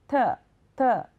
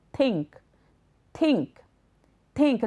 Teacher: Your tongue should stick out a little between your teeth. And as you push air out of your mouth, let some air escape between your tongue and teeth. That's what makes the sound. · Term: Th sound